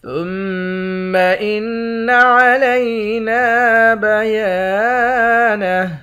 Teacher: میم مشدد اور نون مشدد ان دونوں پر غنہ کریں گے۔ نون کے بعد الف ہے، الف حروف مدہ ہے، یا کے بعد بھی الف ہے، یہ بھی حروف مدہ ہے، ان دونوں کو ایک ایک الف کی مقدار کھینچ کر پڑھیں گے، آخر میں ہاں ساکن ہے۔